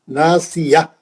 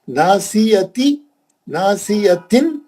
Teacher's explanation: اگر آپ روکنا چاہیں تو ہا میں بدل جائے گی. تا مربوطہ ہا میں بدل جائے گی